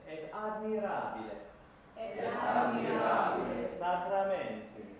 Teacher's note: So there's no T sound. It's a much more dentalized T.